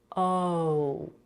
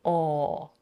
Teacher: and not zow the O is also hard for many people we need to drop the jaw and round the lips for all and slowly close the lips while keeping the voice on